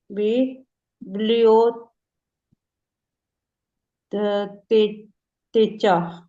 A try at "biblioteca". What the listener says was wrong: चा क्यों पढ़ रही है? ची चे की साउंड कहाँ पे होती है? बिब्लियोतेका। ची के बाद ई और ए हो तो फिर ची और छे बनता है, अगर आ ओ ऊ हो तो फिर का को कू बनता है। बिब्लियोतेका।